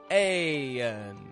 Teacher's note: an N where our tongue is low in the back and high in the front